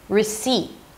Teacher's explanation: I did say a T, I just didn't release it. This abrupt stop of air is the T.